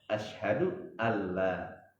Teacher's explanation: Asyhadu an la tulisannya begitu, tapi kita baca asyhadu alla ya.